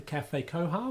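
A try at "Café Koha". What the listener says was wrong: I think it's just pronounced Koa. I don't think you have to say Koha. Koa? I'd say Café Koa.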